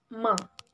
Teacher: voiced bilabial nasal sound ma